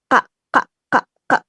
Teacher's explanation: Pengucapannya dengan cara diberikan sentakan pada tenggorokan. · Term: konsonan rangkap